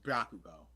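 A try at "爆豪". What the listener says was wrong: Bakugo. There's no Y.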